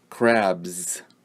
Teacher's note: And you'll see below the English spelling, C-R-A-B-S, you'll see the IPA symbols. And you'll see here that the S ending sound makes the sound Z